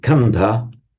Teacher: The consonant cluster the sk has broken down now in parley into a single consonant. But because of the presence of the s that's the loss of the s is kind of compensated for by aspirating the consonant.